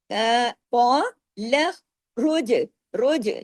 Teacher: جیم کو ہلا دینا ہے، جیم کو روج کر کے جما کے ساتھ نہیں پڑھنا، ہلا کے پڑھنا ہے۔ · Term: کلکلے